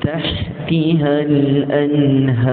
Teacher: Yang betul adalah nipiskan ha. Panjangkan alif. Dan tebalkan ra bila kita berhenti.